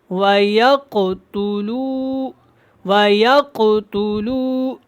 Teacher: یہ کاف موٹا ہوگا اور اس کے اوپر قلقلہ بھی ہوگا